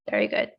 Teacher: he emphasized the falling intonation at the end